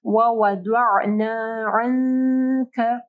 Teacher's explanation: کاف جو ہے اخفا حروف میں سے ہے تو یہاں پہ اخفا غنہ ہوگا · ووضع نہیں پڑھنا، ضاد کو ہیوی پڑھنا ہے